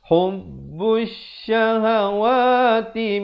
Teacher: Lamnya tidak dibunyikan. Lamnya disamarkan ataupun dihilangkan pada bunyi, tetapi masih kekal pada tulisan. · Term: alif lam syamsiah